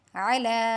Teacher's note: عین کو وسط حلق سے پڑھیں گے